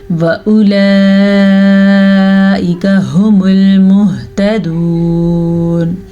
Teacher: واؤ کی حرکت نہیں ہے تو واؤ کو ادا نہیں کریں گے، ہا کے تلفظ کو واضح تلفظ کے ساتھ ادا کریں گے، اسی طرح مہتدون کو بھی واضح تلفظ کے ساتھ ادا کریں گے۔